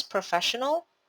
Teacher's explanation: the stressed syllable in professional is on the fe syllable